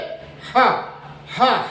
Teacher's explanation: ह काकल ध्वनि है, ये स्वर यंत्र मुखी है, इसका उच्चारण स्थान बिल्कुल गले से नीचे ह हाथ धर के आप देखिए, गले से बिल्कुल नीचे का जो हिस्सा है वहां से इसका उच्चारण स्थान होता है, इसलिए इसको स्वर यंत्र मुखी कहते हैं।